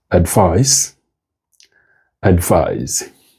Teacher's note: Pay particular attention to the stress of these words. Both of them have their stresses on their second syllables.